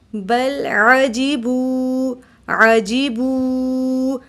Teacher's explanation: بل لام ساکن ہے، اس کو ہلائیں گے نہیں، یہاں پر حروف قلقلہ تھا، اس وجہ سے ہم نے ہلا کر پڑھا، لیکن قاف طا با جیم کے علاوہ جتنے بھی حروف آ جائیں تو اس کو اپنے مخرج میں روک دیں گے، بل بل بل نہیں کریں گے۔